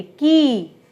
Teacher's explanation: क तो हमने बहुत थोड़ा बोला, और जो उसकी ई की मात्रा थी वो हमने बहुत लंबी बोली